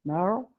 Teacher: Es una R uvular que se debe articular bastante posterior, ¿no? En la zona posterior de la cavidad bucal.